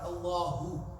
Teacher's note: when you say Allahu, what happens to your lips when you say hu? They go round, right? Allahu. But when you say Akbar, your lips are supposed to be back.